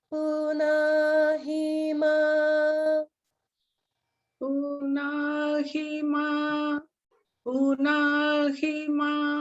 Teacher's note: in Punahima, there are no swara marks. So it's all the middle note. So just one note.